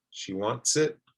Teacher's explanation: Connect the S to the I.